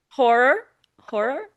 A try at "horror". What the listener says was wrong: When you say horror, I just hear whore.